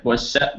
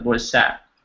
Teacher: It's a little longer on the sat.